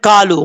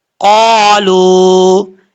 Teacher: قاف جو ہے دو نقطوں والا یہ پر پڑھا جاتا ہے کیونکہ حروف مستعالیہ میں سے ہے